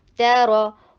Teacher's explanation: ता शॉर्ट रखिए और रॉ हैवी कीजिए, ता लाइट है, रॉ इधर हैवी है, ता रॉ, वो ضلالة, لانگ اینڈ شارٹ کو دھیان رکھیں گے انشاءاللہ آپ کی بہترین تجوید ہو جائے گی.